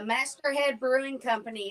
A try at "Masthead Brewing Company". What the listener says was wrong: It's not Master. It's Masthead.